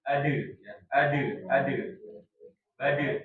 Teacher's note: dia konsepnya punya sifat qalqalah karena syiddah bertemu dengan sifat jahar ya